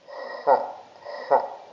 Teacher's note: H datang dari tenggorokan bagian tengah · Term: H kecil